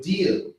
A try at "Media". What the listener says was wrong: You said Medea. No, yeah, Media.